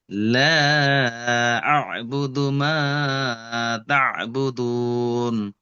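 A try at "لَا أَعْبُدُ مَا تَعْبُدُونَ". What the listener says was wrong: মাশাআল্লাহ, মাশাআল্লাহ, খুব সুন্দর পড়েছেন ভাই আমার।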